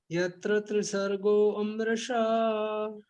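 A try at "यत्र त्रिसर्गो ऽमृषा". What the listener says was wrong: आपने सिलेबल्स जो हैं वो जोड़ दिए इसके अंदर.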